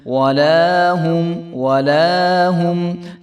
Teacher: لام کے آگے جو ہے الف ہے تو اس کو ہم ایک الف برابر لمبا کریں گے